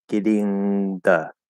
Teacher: nice solid th so that's the only thing that's possible there it's not dropping the th it's just making it a dental d · The only thing that you can do with that th, you can either say it as a th or you can do a dental d.